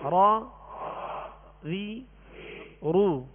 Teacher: را پر زبر اور پیش ہو تو را کو پر یعنی موٹا پڑھیں گے، اور را کے نیچے زیر ہو تو را کو باریک پڑھیں گے